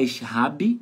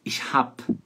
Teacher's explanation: essa letra B, no final de palavras e antes de consoantes, tem som de P de pato.